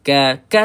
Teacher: Keadaan kaf dan juga ta ni ketika berbaris dia tak kuat sepertima dia mati.